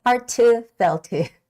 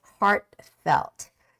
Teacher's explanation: would say heart to felt to right but don't say that don't make that hard T sound rather just forget about that t sound in the middle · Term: soft stopping sound